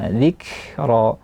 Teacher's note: Juga kita lihat di kalimat dzikra ada kaf yang sukun, yaitu dia ada sifat hams mengalir nafas. Ketika setelah dia tertahan, maka dia mengalir nafas hamas dzikra.